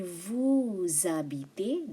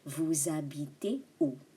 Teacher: And vous habitez, there should be a link or liaison there.